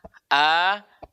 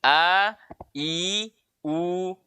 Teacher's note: makhraj paling jauh ini yaitu pangkal tenggorokan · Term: huruf hamzah